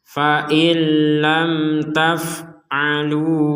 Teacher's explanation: nun mati bertemu lam, diperkuat dengan tasydid. Ya, ini kita bacanya dimasukkan.